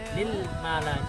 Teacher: lam ini tidak termasuk huruf qalqalah, sehingga dalam pengucapannya ketika sukun tidak perlu dipantulkan. Jadi yang baik itu adalah lil mala. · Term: lam sukun